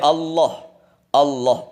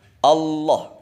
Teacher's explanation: ujung lidah ditempelkan di belakangnya pangkal gigi atas ujung lidah ditempelkan di belakangnya pangkal gigi atas pangkal gigi seri